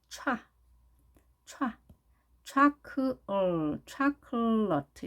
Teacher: 강세가 맨 앞에 O에 있는 발음입니다